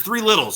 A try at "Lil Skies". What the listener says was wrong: No, not Littles, 3 Lils. Not Little. Lil. You say Little. Lil.